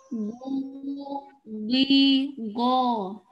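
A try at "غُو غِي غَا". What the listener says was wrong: Oh, panjangkan makhraj jaufnya, panjangkan. Panjangkan. Dipanjangkan. Oh, panjangkan biar sampai berapa harokat.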